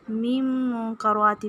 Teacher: میم کو میم کے ساتھ ملا کر پڑھیں گے اور پھر منکراتی میں اخفا ہوگا